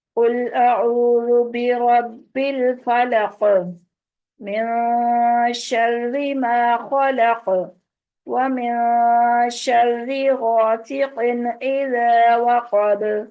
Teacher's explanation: قاف، با اور دال اس سورہ میں حروف کلکلا ہے جن پر ہم نے وقف کرتے ہوئے کلکلا کیا ہے